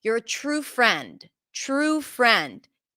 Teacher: True is stressed. Friend is stressed. Friend is a little more stressed than true.